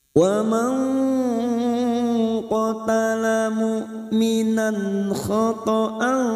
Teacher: nun sukun bertemu qaf ikfa hakiki kita samarkan bunyi nun sukun 2 atau 3 harokat. Ini juga yang disebut dengan ikfa ab'ad karena nun sukun bertemu qaf jika diringkas menjadi 1 ikfa hakiki.